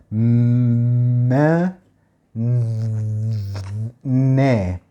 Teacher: في الشكل الطبيعي معظم الأصوات بتطلع من الفم ما عدا مثلا صوت زي صوت النون والميم، ما، نا، الصوتين دول بيطلعوا من الأنف